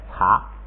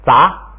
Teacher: 现在这个一不送气不擦了，就变成杂了